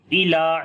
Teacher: لام کو لمبا کریں گے، کھڑی زبر ہے اس کے اوپر